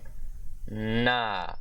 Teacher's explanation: So specifically, this is apicoalveolar instead of laminoalveolar. So this is the voiced apicoalveolar nasal consonant